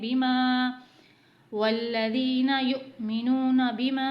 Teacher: چھوٹا مد آ رہا ہے تو ہم اسے 3 حرکت کے برابر کھینچ کر پڑھیں گے